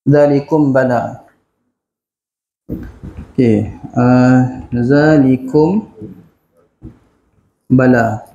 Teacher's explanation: bila mana mim mati, mim yang tiada apa-apa tanda, maka bertemu dengan huruf ba, kita akan baca dia dengan dengung. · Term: ikhfa syafawi